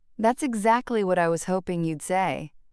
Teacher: The pause after that combined with the emphasis on exactly creates a complex emotional cocktail. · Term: layered intonation